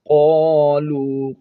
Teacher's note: قاف کو موٹا پڑھیں گے، ایک الف کی مقدار کھینچیں گے الف کو